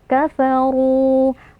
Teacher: yang sebelumnya berharakat kasrah cara membacanya kita panjangkan dua harakat kafaru RO di sini karena berharakat damah maka dia tafkhim atau tebal jadi kita angkat pangkal lidah